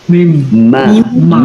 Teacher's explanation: Jadi huruf mim, ba dan wa. Jadi mim melibatkan dua bibir.